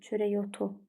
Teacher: Vurğusu son hecəyə düşür.